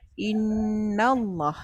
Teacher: Lam lafzu jalalah dibaca dengan taghlis dan tafkhim